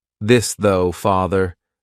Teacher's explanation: you're going to put your tongue in between your teeth and your vocal cords are going to vibrate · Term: voiced th